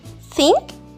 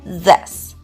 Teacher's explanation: Just place the tip of your tongue gently between your teeth. The only difference is your voice. No voice or voice. · think voiceless and this voiced. The tongue position is the same. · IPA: /θ/